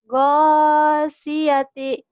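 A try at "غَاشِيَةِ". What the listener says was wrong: shinnya mana? Nah itu hutang kamu tuh. Shinnya. Ghasyiyati. sin.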